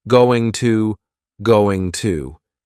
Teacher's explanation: Going to is generally pronounced with the schwa.